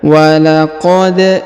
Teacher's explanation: perhatikan huruf da berharokat sukun, maka kita pantulkan atau kita qalqalahkan